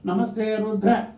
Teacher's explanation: నమస్తే రుద్ర ఒక అక్షరం కింద నొక్క, నమస్తే రుద్ర అని ద్రా అనే అక్షరాన్ని కిందగా నొక్కాను